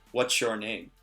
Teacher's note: And that pronunciation is kind of changing as opposed to the individual words, what's your name? When I'm saying it quickly, what's your name? It kind of has a CH sound.